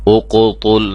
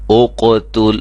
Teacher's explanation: یہ قاف اور تا میں فرق ہونا چاہیے۔ قاف موٹا ہے، تا باریک ہے، یہ نہ ہو کہ ہم تیزی میں پڑھیں اور یہ بھی موٹا ہو جائے۔